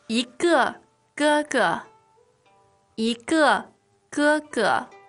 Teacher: So what we're contrasting here is the fourth tone for 一个 and the first tones for 哥哥